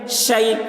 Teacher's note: شیئن، شین یا زبر شی، یا ساکن سے پہلے زبر ہے، یا لین ہوا، اس لیے یا لین کو نرم آواز کے ساتھ جلد پڑھیں، معروف پڑھیں، مجہول آواز سے بچیں، شی۔ حمزہ دو زبر ان، حمزہ کے اوپر دو زبر کی تنوین ہے، تنوین اور نون ساکن کی آواز یکساں ہوتی ہے، شیئن، شیئن۔